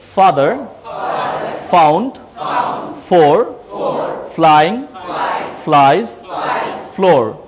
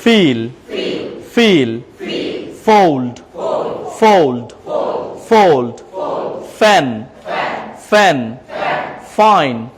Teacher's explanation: এটা হচ্ছে উপরের দাঁত নিচের ঠোঁট লাগিয়ে বলেন